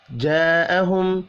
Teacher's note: بڑی مد ہے، الف کے اوپر 5 الف کے برابر کھینچ کر پڑھیں گے